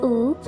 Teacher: is fully close and back